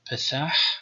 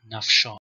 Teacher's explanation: the stop P and the fricative F after vowels. So we have the first example, Pethah, with P at the beginning, Pethah, and after a vowel it is F as in Nafsha.